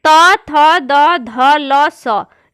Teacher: दांत और जीभ से निकलते हैं टच करते हुए, इसलिए इन्हें दंत कहा जाता है।